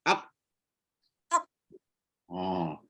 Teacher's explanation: Lelangit belakang, lidah pangkal lidah, angkat sampai sentuh. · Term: huruf qaf